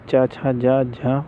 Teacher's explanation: चा छा जा झा उदाहरण हैं, स्पर्श संघर्षी व्यंजन के उदाहरण हैं